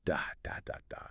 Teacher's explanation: Every syllable receives roughly the same amount of time and energy. It creates a steady, rhythmic cadence. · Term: syllable-timed